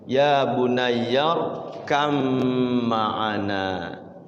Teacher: Di sininya ada tasydidnya biasanya. Jadi ba-nya itu seolah-olah kayak mim karena hurufnya satu tempat makhrajnya itu. Ba ma berdekatan hurufnya ya. · Tulisannya irkab ma'ana, yang tadinya qalqalah hilang qalqalahnya berubah jadi gunnah. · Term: idgham mutaqariban